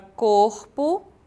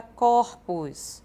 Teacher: certos substantivos formam plural com mudança de timbre da vogal tônica que aparece fechada, e quando nós fazemos o plural, ela passa a ser aberta. Esse é um fato fonético chamado metafonia.